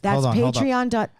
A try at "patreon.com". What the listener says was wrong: I think you said patriot.com.